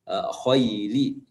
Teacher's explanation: huruf kha yang keluar dari tenggorokan bagian atas. Kha itu tebal